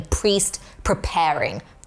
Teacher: there's bilabial plosive alliteration in priest preparing